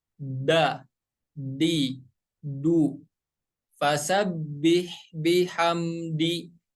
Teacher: Huruf dal tempat keluarnya dari, maaf ya, ujung lidah menempel ke tempat tumbuh gigi seri yang atas. Ya, yang atas, tempat tumbuh gigi seri yang atas.